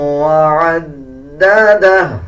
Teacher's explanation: الٹا پیش کا مطلب ہوتا ہے کہ جس الفاظ کے اوپر الٹا پیش آ رہا ہو اس الفاظ کو 1 سیکنڈ لمبا کر کے پڑھا جائے، اور جب وقف کریں گے تو الٹا پیش سائلنٹ کر دیں گے اور ہا کی آدھی آواز نکالی جائے گی